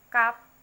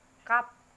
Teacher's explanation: itu bacanya a mingkem atau mulut tidak terbuka lebar seperti cup. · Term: vowels lex